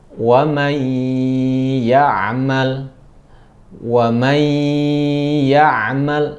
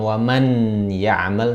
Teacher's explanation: Nah, ketika bertemu dengan huruf yang 6 itu, ya, maka masukkan kepada huruf berikutnya. Jadi nunnya menjadi dimasukkan, tidak dibaca, dimasukkan kepada huruf berikutnya. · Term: bi gunnah